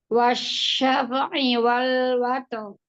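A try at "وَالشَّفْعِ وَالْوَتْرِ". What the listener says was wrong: Fa-nya tidak dipantulkan, wasyafa, tidak fa. Fa. Alirkan suaranya. Sama hamas. Rohoh hamas. Ya, roknya itu tebal apa tipis? Tebal, karena sebelumnya ada sukun, kemudian sebelumnya lagi harokat fathah.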